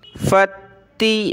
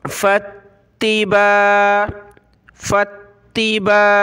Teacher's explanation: फ़ा को हमने ता के साथ मिलाना है और ता को तशदीद की वजह से सख्त करना है।